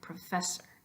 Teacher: you're putting not only more air but more time into the e there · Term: emphasis